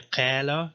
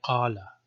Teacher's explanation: the alif sounds a little a little darker it's a little backed a back vowel